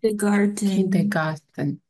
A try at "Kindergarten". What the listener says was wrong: Ja, das T ist ein bisschen stärker. Kindergarten. Ne, mit T.